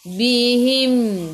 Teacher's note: Bihim, berhenti dengan mim, tutup mulut.